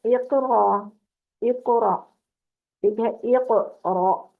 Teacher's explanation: ایک قاف کی آواز پلٹ کے آئی۔ پلٹ کے آنے کا مطلب ہے کہ آپ نے زبان کو مخرج پہ رکھنا ہے اور چھوڑ دینا ہے۔ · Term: قلقلہ